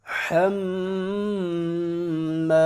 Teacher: میم مشدد ہے لہذا غنہ ہوگا